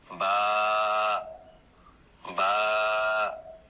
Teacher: বা দুই ঠোঁটের ভেজা অংশ থেকে বা উচ্চারণ হয়